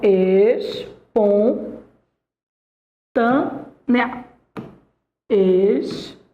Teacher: Em espontânea, você tem, ó, a tonicidade está na penúltima sílaba. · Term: paroxítona